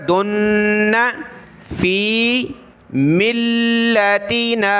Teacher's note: یہاں دال کو نون کے ساتھ ملا کر غنہ کیا ، دن فی ملتنا، لام کو سخت کیا تشدید کی وجہ